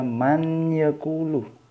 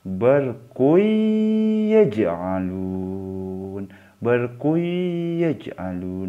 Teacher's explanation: Yang benar karena ini bacaan idgham bi gunnah dibaca may yaqulu, masuk ke ya tapi didengungkan